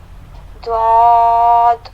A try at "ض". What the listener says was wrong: موٹا کیجیے. ضاد. تھوڑا سا اور موٹا.